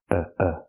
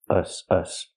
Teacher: And then the closed relaxed sound, uh uh, like cup and up